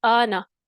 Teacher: الف مدہ ہمارے پاس آیا اور پھر اس کے بعد سبب مد مل گیا ہمیں، تو ہم نے زیادہ کھینچا اور مد فرعی ہوگی۔ · الف مدہ ہے ہمارے پاس، یعنی یہ مد فرعی ہے جا، یہ مثال، کیونکہ الف مدہ آیا ہمارے پاس لیکن اس کے بعد سبب مد بھی آ گیا، یعنی محل مد تھا، سبب مد آ گیا اور مد کو زیادہ کھینچا